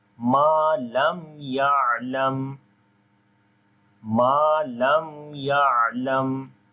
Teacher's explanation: After the mim sakin, the next letter is ya now. So we make izhar shafawi here. We make the clear sound of mim.